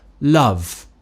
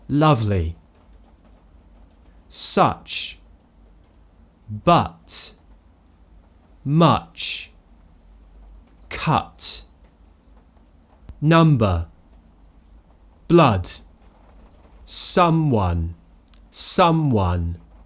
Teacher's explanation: I'm not smiling I'm not rounding my lips my tongue is very Central very relaxed my jaw is just slightly open more open than awah uh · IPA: /ʌ/